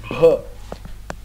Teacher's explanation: E esse é o B de bola com muito ar